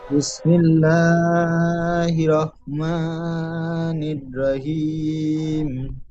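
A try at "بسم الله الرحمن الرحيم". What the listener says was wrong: এখানে ছোট হাচ্ছে বড় হা উচ্চারণ করবেন রাহিম হা গলার বীজখান থেকে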